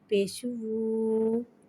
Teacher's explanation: واو مدہ کو ایک الف یعنی 2 حرکات کے برابر کھینچ کے پڑھیں گے، اور واو کو ہونٹوں کی گلائی کے ساتھ ادا کر کے پڑھیں گے، اور پیش کو بھی ہونٹوں کی گلائی کے ساتھ ادا کر کے پڑھیں گے